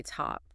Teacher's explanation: I can almost feel that burst of air when I say top.